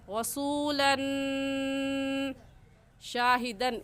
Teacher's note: रसूलन पर हमने गुन्ना इस वजह से किया क्योंकि तनवीन के बाद हुरूफ हल्की जो कि 6 है, हमज़ा हा आइन हा गैर खा में से कोई लफ्ज़ नहीं आया, इस वजह से इस तनवीन पर हम गुन्ना करेंगे